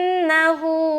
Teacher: نون مشدد کا غنہ کر رہے ہیں، نون کے اوپر شد ہے